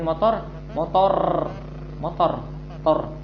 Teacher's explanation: Kalau orang Indonesia berlebihan. Ucapin motor, tor, R-nya banyak, getarnya banyak. Juga enggak seperti orang Inggris, motor, or, sehingga ada sebagian yang mengucapkan ra itu gitu.